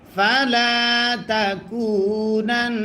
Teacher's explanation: নুনে যদি তাসদিদ হয় গুন্না করা ওয়াজিব হয়